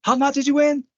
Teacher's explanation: So when you're surprised, you use question words with rising intonation.